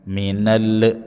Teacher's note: lam sukun jelas jangan mantul.